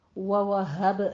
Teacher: اوپر فتحہ ہے اس لیے، وَوَهَبْ ہا میں حب نہیں کہنا، ہا موٹی رکھنی ہے، آواز عکس حلق سے نکالنی ہے، سینے کی جانب سے ، با پہ قلقلہ کرنا ہے، لہو میں مد صلہ صغریٰ